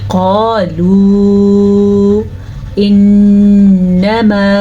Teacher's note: میں نون پہ رکی ہوں، میں نے غنہ کیا ہے